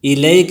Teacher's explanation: الیک میں یا لین ہے، یا ساکن سے پہلے زبر آئے ہیں تو اس کو نرمی کے ساتھ پڑھیں گے